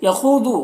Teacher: خا اور ذا دونوں کو پر پڑھنا ہے اور خو میں واو مدہ، ذو میں واو مدہ، دونوں واو مدہ دونوں کو ایک الف کے برابر کھینچیں گے۔